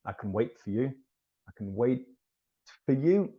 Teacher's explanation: so the t almost disappears